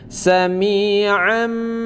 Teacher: bunyi Nun ini bunyi baris 2 ini kita jadikan bunyi mim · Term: hukum iqlab